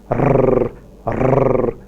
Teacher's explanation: In the production of a trill, there are several taps like rrr, rrr.